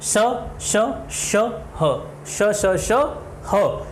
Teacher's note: तो संघर्ष यानी इन श श श और ह इन वर्णों को बोलते समय ऐसा लगता है कि हमारे मुंह के अंदर घर्षण हो रहा है, इसलिए इनको संघर्षी व्यंजन या ऊष्म व्यंजन कहा जाता है।